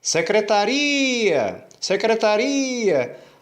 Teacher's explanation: A sílaba que eu dou mais ênfase e que eu alongo a vogal é a sílaba ri. Então é exatamente essa que é a sílaba tônica.